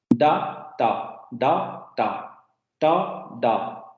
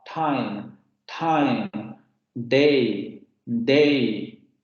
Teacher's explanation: lo que vemos justamente es que la lengua sube hacia los alveolos aquí se pronuncia la tap tap o la da da da